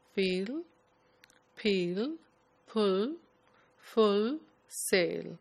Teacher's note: in the mouth somewhere at the back of the mouth and the dark la sound comes normally at the end of words or before vowel sounds